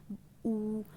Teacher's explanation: होठों से जो बोलते हैं, ऊ। जब हम ऊ बोलते हैं तो पूरे हमारे जो होंठ होते हैं वो गोल गोल घूम जाते हैं, तो वो हमारे ओष्ठ स्वर में आते हैं।